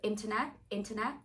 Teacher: And there's no r in the middle, just a schwa.